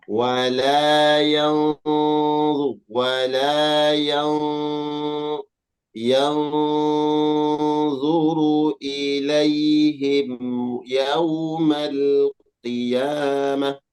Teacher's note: Nun sukun bertemu huruf dha, ikhfa hakiki, dan ikhfanya dibaca tebal karena dha huruf isti'la atau huruf tebal.